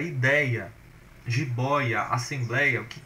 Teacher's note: Você vai ver que elas são paroxítonas, ou seja, a penúltima sílaba que é a mais forte, e tem um ditongo nessa penúltima sílaba